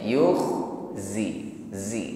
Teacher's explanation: upayakan pengucapan zai disertai dengan sifat as-safir. Ada bunyi desisnya.